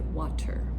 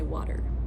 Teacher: in standard American English, we would just use the flap sound